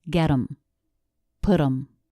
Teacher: The flap T links the words, and the reduction of them and him are the exact same sounds, schwa and m.